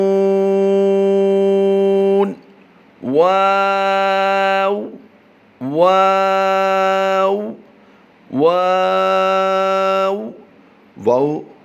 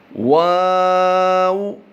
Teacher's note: واو آگے سے ہونٹ بالکل گول ہو جاتے ہیں جب واو کی ادائیگی کی جاتی ہے